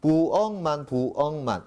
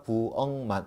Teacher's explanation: 그렇다면 음절이 끝소리 현상 맞습니까? 그런데 부억 다음에 만, 미음이 왔으니까 앞에 있는 기역은 다시 뭘로 바꿔준다고요? 비음으로 바꿔준다. 그러니까 부엉만 이래 되겠네. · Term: 비음화 현상